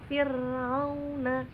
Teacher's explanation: Yang pasti ro tarkik itu dia tipis dan cara bacanya harus senyum.